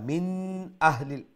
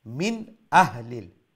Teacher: ইজহার যেটাকে বলা হয় মানে তাজবিদের পরিভাষায় সেটাকে ইজহার বলে অর্থাৎ আমরা নুনের যে সাউন্ডটা আছে সেটাকে আমরা স্পষ্ট করব এবং এইটা নাকের দিকে কোন সাউন্ড যাবে না